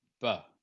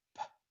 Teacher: the B is using voice, and you can feel your vocal folds vibrate, and a P doesn't. And so the vocal folds don't vibrate. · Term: voiced pairs